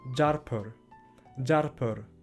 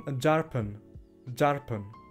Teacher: Das N ist in manchen Worten noch ein N geblieben, während im Toskischen wurde es zu einem R-Laut, zu einem R. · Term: Rotazismus